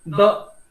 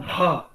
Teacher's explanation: त थ द ध, त अल्प प्राण, थ महाप्राण, त थ द महाप्राण, ध महाप्राण, है ना। द कम हवा लगता है, ध ज्यादा हवा लगता है।